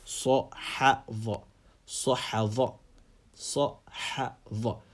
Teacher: Sad is a full mouth letter, Ha is an empty mouth letter, and Dha is a full mouth letter. So you're moving from full mouth to empty mouth to full mouth.